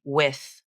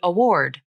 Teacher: Here is the W consonant in isolation. The lips come forward and round into a tight circle. You can't see the tongue, but it pulls up and back towards the soft palate, and the vocal cords tense slightly to constrict the airflow. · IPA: /w/